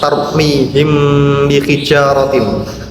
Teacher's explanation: Di situ ada mim sukun bertemu dengan huruf ba sehingga lafaz tersebut dikategorikan sebagai salah satu contoh dari bacaan ikhfa syafawi dan cara bacanya harus samar serta mendengung sehingga kita tidak diperbolehkan membaca tarmihim bihijaratin tanpa adanya dengung. · Sedangkan ikhfa syafawi secara terminologi adalah apabila ada mim sukun atau mim mati bertemu dengan huruf ba. Adapun cara bacanya itu harus samar-samar di bibir serta mendengung.